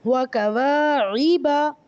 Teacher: اس میں صرف واو کو لمبا کر رہے ہیں الف مدہ کی وجہ سے.